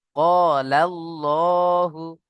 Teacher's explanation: পুর হবে। মুখটা গোল করে ল করে পড়তে হবে।